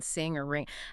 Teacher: that nasal ing sound that hums right up in your nasal cavity like in sing or ring